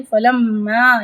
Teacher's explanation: یہاں پہ میم پہ ایک الف برابر غنہ کریں گے